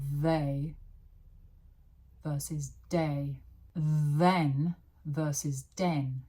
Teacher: remember that the is voiced.